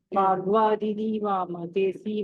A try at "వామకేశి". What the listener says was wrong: కేసి అంటున్నారు మరి.